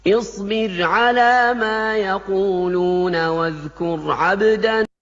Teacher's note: di awal tuh ada rok sukun tipis, lalu setelahnya ada rok sukun tebal, sama-sama lembut getarannya